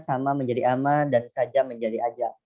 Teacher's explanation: penghilangan huruf fonem awal, misalnya sama menjadi ama dan saja menjadi aja